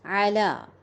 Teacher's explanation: عین کا مخرج بھی وسط الحلق ہے